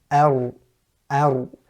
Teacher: So because your tongue, or the edges of the tongue, or the edges of the tip of the tongue are touching, and there's a little bit of a gap in between, touching the makhraj, what happens is there's a slight vibration or trilling or slight vibration when you pronounce the Ra. And that's a natural distinctive feature of the Ra when it's pronounced, the Arabic Ra. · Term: Takreer